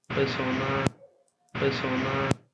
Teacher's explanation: hay una transición directa entre la vocal E y la consonante S.